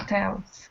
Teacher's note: So the stress is on the second syllable, not the first. Not hotels, but hotels.